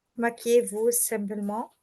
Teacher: you should link the sound E and vous